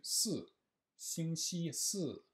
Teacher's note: le S se fait avec la pointe de la langue derrière les dents du haut. Donc on commence d'abord avec la pointe de la langue derrière les dents du bas, Xing Qi, et on passe après au-dessus, Si, Xing Qi Si.